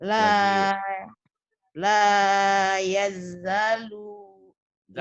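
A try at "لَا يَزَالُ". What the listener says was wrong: lanya panjang. Iya, zanya panjang, lu-nya pendek, ini ketukar. Lu-nya pendek, lu-nya pendek, lu-nya pendek.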